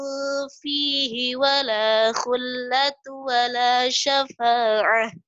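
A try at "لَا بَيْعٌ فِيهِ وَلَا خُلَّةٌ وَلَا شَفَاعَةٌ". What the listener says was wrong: Ini tasydidnya ketinggalan tadi. Wala khullatu lagi.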